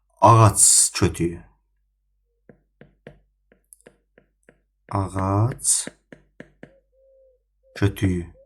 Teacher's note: yenə də sözün sonundakı cingiltili samit karşılığına çevrilir. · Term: samit karlaşır